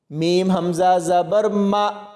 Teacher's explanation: میم کو حمزہ کے ساتھ ملائیں گے تو یہاں پر جھٹکا دے کے پڑھا جائے گا